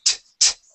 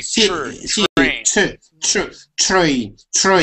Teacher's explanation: when you pronounce that tr, that's a ch sound